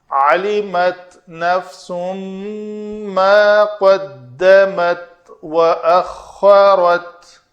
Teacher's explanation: عین کو مخرج سے ادا کرنا ہے، علمت نہیں کر دینا، حمزہ بن جائے گا